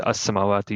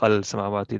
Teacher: So we know the lam becomes silent in this case. It fuses together with the scene with a shadda, but nevertheless, it's still an al.